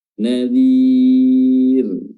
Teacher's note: huruf ra kita baca tertik, kita baca tipis karena sukun didahului oleh kasrah.